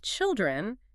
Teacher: >> But when we add the plural suffix to make children, the vowel just collapses into a short I rhyming with pill